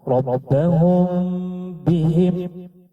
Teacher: Mim sukun bertemu dengan huruf ba dikenal dengan bacaan ikhfa syafawi. Cara membaca ikhfa syafawi adalah dengan mensamarkan antara bunyi huruf mim dan huruf ba selama 2 hingga 3 harakat disertai dengan mendengung.